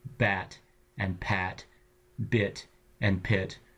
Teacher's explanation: the voiced and the unvoiced is just voicing that bilabial stop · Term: bilabial stops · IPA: /b/ and /p/